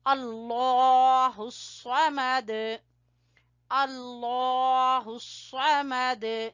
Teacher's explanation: صاد کو پر پڑھیں گے اور دال کے اوپر قلقلہ کریں گے